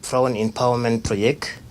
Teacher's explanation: he always drops the T on project, so which is an Afrikaans thing to do.